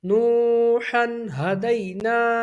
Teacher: ہا کس میں سے؟ حروف حلقی میں سے، تو یہاں پر اظہار ہوگا